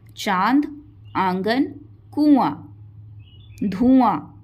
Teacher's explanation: इसमें जो वायु है हवा जो है वो नाक से भी निकलती है और मुंह से भी निकलती है। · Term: अनुनासिक